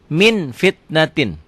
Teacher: Nah, kalau ini harus engnya banget, berasa di sini ada m-nya. Bila nun mati atau tanwin bertemu dengan fa, bunyinya berubah menjadi mm. Akan tetapi mutlak tidak tertutup rapat, masih ada udara yang keluar ketika membacanya. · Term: Ikhfa